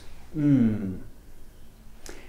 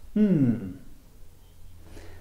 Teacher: So the sound comes through the nose rather than the mouth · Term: bilabial nasal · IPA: /m/